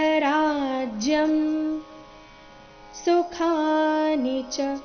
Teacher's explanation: ಅಲ್ಲಿ ಖ ಖ ಮಹಾಪ್ರಾಣ ದೀರ್ಘ ಇದೆ